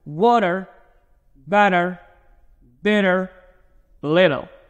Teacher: When I say flap T, you don't have to pronounce the letter T strongly as it is, but you can do it as a light D sound.